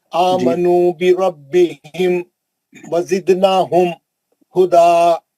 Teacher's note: ये बिरब्बिहिम का मीम भी जल्दी पढ़ो, वजिदनहुम का मीम भी जल्दी पढ़ो, खींचना नहीं, गुन्ना नहीं करना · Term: इजहार